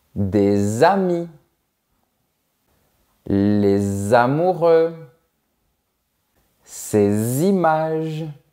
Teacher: des amis les amoureux ces images Remarque bien que le S est prononcé comme un Z. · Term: liaison